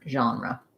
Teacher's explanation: the word genre, again from the French, has this zh sound at the start